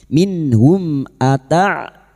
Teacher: mim sukun bertemu hamzah idhar syafawi mim sukun dibaca jelas tanpa mendengung